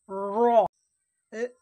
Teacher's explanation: র এর মাখরাজ হচ্ছে জীবের আগার উল্টা পিঠ এবং তার বরাবর উপরের তালো র জীবের আগার উল্টা পিঠ র মুখটা গোল হবে জীবের আগার